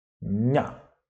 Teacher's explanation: A gente pode pronunciar o N abrandado, palatalizado.